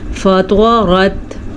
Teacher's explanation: طوا بھی پر اور را بھی پر، تا باریک